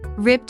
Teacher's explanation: Note that when ed is added to the end of rip, it's pronounced as t.